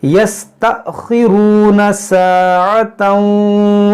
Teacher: हमज़ा साकिना है, तो इसमें झटका होगा